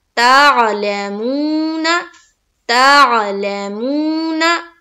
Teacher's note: और वाव साकिन से पहले कोई भी हर्फ हो उसके ऊपर अगर पेश की हरकत आती है तो वहां पर वाव मद्दा का कायदा बनता है, और वाव मद्दा को हम एक अलिफ के बाकदर खींचते हैं। तो हम यहाँ पर करेंगे मुंह, यानी कि ता को आइन से मिलाया, ता, लाम को जल्द अदा किया, ला, मुंह में अलिफ वाव मद्दा करते हुए एक अलिफ के बाकदर खींचेंगे, और ना को फिर हम जल्द अदा करेंगे।